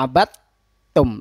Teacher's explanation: Seperti dalam contoh ma'abattum, dal ketemu sama ta, abad tum. Nah, ini kita baca abattum, langsung masuk ke dalam huruf ta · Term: idgham mutajanisain